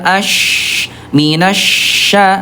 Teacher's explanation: Ini ada furjah, ada rongga untuk menyempurnakan sifat huruf, namanya rokhawah, lemah mengalir